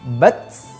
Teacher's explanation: saat sukun huruf ta ini condong lebih terdengar hembusan nafasnya